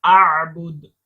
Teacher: یہ دال پر جھٹکا کریں گے، قلقلہ کریں گے